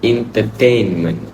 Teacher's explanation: the word entertainment might be stressed on the second syllable